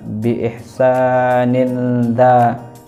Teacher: kasrah tanwin bertemu dengan huruf da, maka dibaca samar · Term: ikhfa hakiki